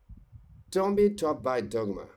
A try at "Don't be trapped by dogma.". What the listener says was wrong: Remember to pronounce also the ed at the end of trapped, okay? Trapped.